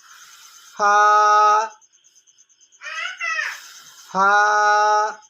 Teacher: তো আসি 14 নম্বর মাখরাজে নিচের ঠোঁটের পেট সামনের উপরের 2 দাঁতের আগার সঙ্গে লাগাইয়া ফা